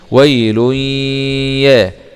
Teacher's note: يؤذن لهم فيعتذرون. واو فتحة واء، ياء سكون حرف لين، وي، لام ضمتين مع الإدغام بغنة في الياء المفتوحة ، لأن الياء من حروف كلمة ينمو، ويل ياء، واو سكون